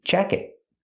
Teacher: The T in jacket is a stop T.